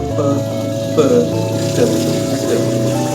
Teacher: This could be a complete blockage, like the stopped sound for p, t, where the air flow is totally cut off for a brief moment